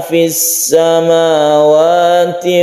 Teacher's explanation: fis samawati tasydid sin, dari al bertemu dengan sin disebut idgham syamsiyah